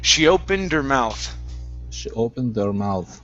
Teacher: drop the H, forget about it, and connect it to the D at the end of opened. So we're going to say opened her.